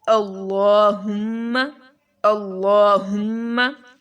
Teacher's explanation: لام کے اوپر کھڑا زبر ہے اور لام کو موٹا پڑھیں گے، میم کے اوپر شد ہے، اس پر غنہ کریں گے، اللہم صلی۔